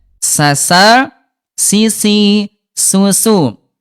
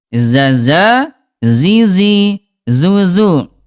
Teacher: Sin dia hams ada udara, kalau zai nggak ada udara. Shad dia tebal, sin dia tipis ya.